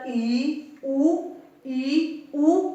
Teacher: ਉੱਚੇ ਸਵਰ ਈ ਊ, ਈ ਊ, ਕਿਉਂਕਿ ਇਹਨਾਂ ਦੇ ਉਚਾਰਨ ਦੇ ਸਮੇਂ ਜੀਭ ਤਾਲੂਏ ਦੇ ਨੇੜੇ ਲੱਗਦੀ ਆ